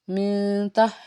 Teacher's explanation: میم نون زیر من، تا زبر تا، من تا، یہاں پہ بھی اخفا ہوگا، نون ساکن کے بعد تا ہے تو اخفا ہوگا، آواز کو ناک میں چھپائیں گے